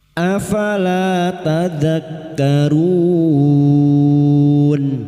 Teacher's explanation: huruf hidup yang dibaca waqaf mat arid li sukun. 4 harakat kita panjangkan.